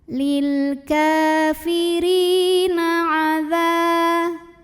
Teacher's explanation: dza mad tabi'i zahiri karena ada alif didahului baris fathah, maka dzalnya panjang 2 harokat